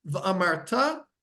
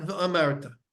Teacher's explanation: they need to be said milara, means you need to put the stress on the last syllable